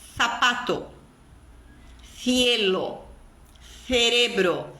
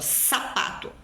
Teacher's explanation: são pronunciadas com a ponta da língua entre os dentes